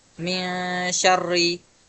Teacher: Dan ikhfa sendiri cara bacanya adalah suara nunnya dibaca samar dan dengung dua harakat